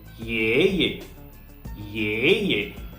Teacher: in the first syllable our voice was rising, ye. In the second syllable our voice was neither falling nor rising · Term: neutral tone